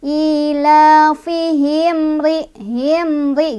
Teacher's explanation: Cara bacanya mimnya dibaca jelas, gak boleh mantul, gak boleh ditahan. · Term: idhar syafawi